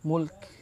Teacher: Sifat kaf ini hams, al-hams ya. Jadi ada bunyi hams sikit lah, kan mulk, tapi sikit sahaja ya.